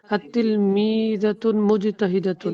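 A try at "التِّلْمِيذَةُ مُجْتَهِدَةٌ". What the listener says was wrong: তিলমি জাতুন না তো, আলিফ লাম। কথা মনে রাখবেন, কোন শব্দের শুরুতে আলিফ লাম আসলে ওই শব্দে কখনো তানবিন হবে না।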